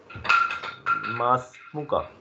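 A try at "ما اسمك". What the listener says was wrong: مسمک ہے. ماں لمبا نہیں کریں گے، جوڑیں گے سین کے ساتھ. مسمک مسمک، اور بریک لگائیں گے جب مسمک.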